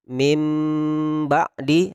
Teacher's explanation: Jadi disamarkan dengan didengungkan itu maksudnya adalah ketika kita menemukan kalimat min ba'di, maka kita langsung memasukkan suara kita dan disamarkan ke huruf ba. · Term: iqlab